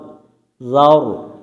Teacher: জাওর মোটা করতে হবে, র সাকিন ডাইনে জবর মোটা করে পড়তে হবে